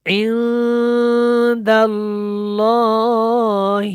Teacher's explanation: لام جو ہے یہ اللہ والا موٹا ہے، اس سے پہلے زبر ہے